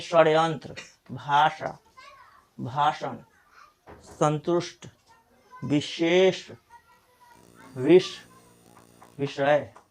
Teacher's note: तरह जैसे कि यह मुर्धन स से शुरू हुआ है तो मुर्धन स को बोलते हमारा जीव जो है मुर्धा पर टच करना चाहिए